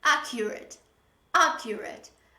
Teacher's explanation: there is only one k when you pronounce it